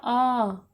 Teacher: जिन स्वरों के उच्चारण में मुंह सबसे अधिक खुलता है अर्थात पूरा खुलता है उसे विवृत स्वर कहते हैं